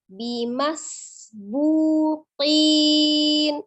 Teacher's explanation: Kemudian bimasbu, ada huruf sin sukun. Sin memiliki sifat as-safir, ya, maka desiskan.